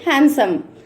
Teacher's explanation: if డి is placed between to consonant sounds we should not pronounce డి sound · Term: సైలెంట్ లెటర్